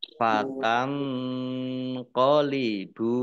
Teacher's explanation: nun sukun bertemu dengan huruf q bacaan Ikhfa dibaca samar-samar